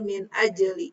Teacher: Jim mati di tengah kalimat, qalqalah sugro dibacanya mantul